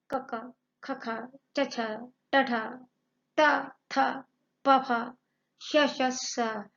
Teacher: अघोष व्यंजन जिन व्यंजनों का उच्चारण करते समय ध्वनियों में, स्वर तंत्रिकाओं में कंपन नहीं होता